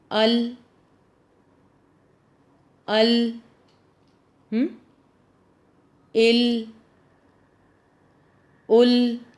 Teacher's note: زبان کا کنارہ جب آگے کے دانتوں سمیت ایک ڈاڑھ کے مسوڑوں کو لگے تو لام ادا ہوتا ہے